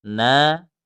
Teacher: nun tasydid, ingat didengungkan yang lama